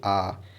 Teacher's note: विवृत में देखिए मुंह सबसे अधिक खुलता है, जैसे आ, ये बोलेंगे तो आपका मुंह ज़्यादा देर तक खुला रहेगा और अधिक मात्रा में खुलता है।